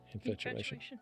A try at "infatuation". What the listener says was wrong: It's not factuation, it's infatuation.